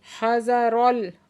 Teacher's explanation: हज़रल रा को पुर करके पढ़ेंगे